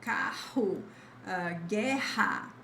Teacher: And we always have just a single R in the beginning of words in Portuguese. If you see the double R in the middle of words, which is where they will appear, the sound is always like ha